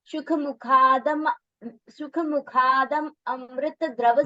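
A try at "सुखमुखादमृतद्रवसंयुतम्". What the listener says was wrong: You again, once again, you mentioned Amrit. No, Damrit. You need to pronounce Damrit. Damrit. Shukumukhadamrit.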